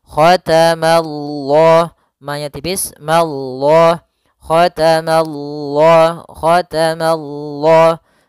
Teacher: Ya, mananya tipis, Allahnya tebal. Nah, maka dia baca dengan lam yang tebal. Dan panjangnya untuk lafal Allah dua harakat dan karena dia mad thabi'i.